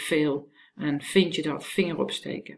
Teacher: Whereas in Dutch, well, we don't really pronounce the v that well. Very often it's pronounced as a f